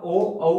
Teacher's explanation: जब आप औ का उच्चारण करोगे तब भी होठ आपके गोल होंगे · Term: वृत्ताकार स्वर